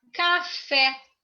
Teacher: Café, oxítona, acentuada na última sílaba.